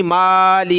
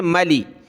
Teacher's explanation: میم کو کھینچے نہیں، مالی نہیں ہے بلکہ ملی